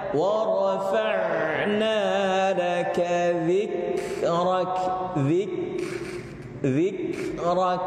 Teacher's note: Syiddah duluan baru hams.